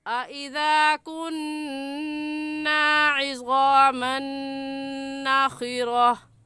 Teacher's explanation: उनमें से नून आ गया है तो यहाँ पर गुन्ना इदगाम के साथ करेंगे